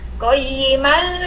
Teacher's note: Qayyiman li wakaf ya. Nah, itu dibaca 2 harokat panjangnya karena dia mad iwad. Nah, kalau kita baca wasol tanpa kita wakaf, tanpa sakta, ada hukum ikhfa.